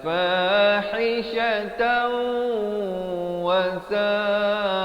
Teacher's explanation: dibacakan dengan idgham bi gunnah. Fahishatan masuk beserta dengung